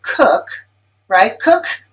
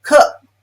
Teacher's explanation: I can close my glottis, cook, before I get to the k sound. And to most English listeners, it sounds like you didn't even say the k sound at the end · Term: glottal stop